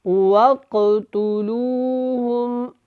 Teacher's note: یہ جو قاف ہے یہ کلکلا ہوگا اس کے اوپر، یہ کاف موٹا بھی ہے